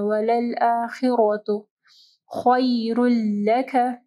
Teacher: خا کو جو ہے ہیوی پڑھنا ہے، را کے اوپر زبر ہے، را بھی جو ہے موٹی پڑھی جائے گی